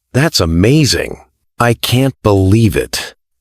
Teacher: Rising falling intonation. Your voice rises in the middle and falls at the end.